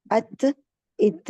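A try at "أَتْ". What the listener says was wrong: नहीं देखिए, अत बन रहा है ना, कलकला हो रहा है, इसमें क्या कलकला है? पहले शिद्दत इसकी वाजिया करें, और शिद्दत के बाद आराम से छोड़ेंगे जब, तो हर्ज खुद भी पैदा हो जाए। ठीक है, कलकला नहीं आपने पैदा होने देना।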